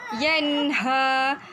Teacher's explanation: kat situ kita baca secara jelas, tidak dengung, dan ha tersebut ialah huruf izhar halki